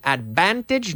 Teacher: you start with the F and then you activate the vocal cord